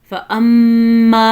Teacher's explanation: فَأَمَّا میں میم پہ غنہ ہے، رکنا ہے